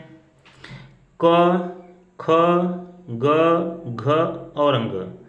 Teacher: क वर्ग जो है इसके अंतर्गत आते हैं क, ख, ग, घ और अंग, और इनका उच्चारण कंठ की सहायता से होता है। अर्थात जब हम लोग क वर्ग का उच्चारण करेंगे तो ये हमारे कंठ द्वारा उच्चरित होंगे।